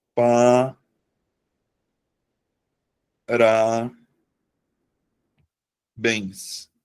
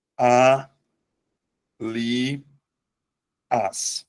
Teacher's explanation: Então, eu vou acentuar porque a sílaba tônica tá na última sílaba da palavra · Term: oxítona